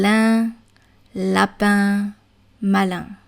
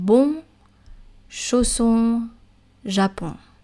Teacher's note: So these are nasal vowels, vowels that are pronounced with the nose.